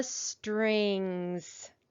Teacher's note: when suffix s comes after the letter g it's gonna make its voiced sound